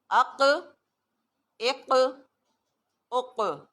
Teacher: سو قاف کی ایک اسپیشل کوالٹی کیا ہے کہ جب ہم اس پر وقف کرتے ہیں تو آواز ری باؤنڈ کرتی ہے